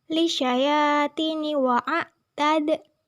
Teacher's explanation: Lisyayatini wa'atad merupakan hukum qalqalah sughra karena huruf qalqalah dal berharokat sukun dan posisinya di tengah kalimat. Cara membacanya dipantulkan secara ringan.